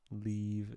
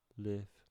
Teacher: leave is a little bit farther forward than liv